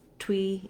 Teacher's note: tui just loses this ooh sound and moves right to the sound for the e